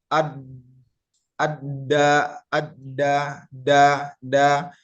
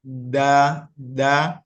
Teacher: terlalu ke belakang ee lidahnya atau da da itu salah namun yang benar adalah ujung lidah bertemu dengan pangkal gigi seri